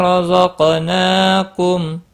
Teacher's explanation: را زبر کی وجہ سے پر پڑھا جائے گا، قاف مستعلیہ ہے، پر پڑھا جائے گا، اس کے اوپر قلقلہ بھی ہوگا۔ نون کے اوپر کھڑی زبر ہے، ایک الف کے برابر کھینچ کر پڑھیں گے۔